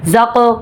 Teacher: زق کلکلا ہوگا کیونکہ قاف پر جزم آ گئی ہے. قاف عرف کلکلا ہے, اس کو پر بھی پڑھیں گے اور اس میں آپ نے کلکلا بھی کرنا ہے.